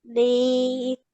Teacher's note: Ni, stretch it for 2 counts.